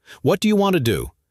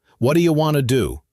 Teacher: want to becomes wanna, and should have becomes shoulda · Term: reductions